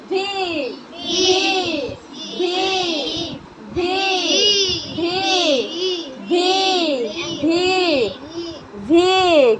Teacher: ভি। ভি উচ্চারণটা উপরের দাঁত নিচের ঠোঁটের উপরে পড়বে, উপরের দাঁত নিচের ঠোঁটে।